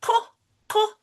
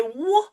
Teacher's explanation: So when you say K, K, no vibration. But when you say W, there is vibration. So first it will be unvoiced and then it will be voiced.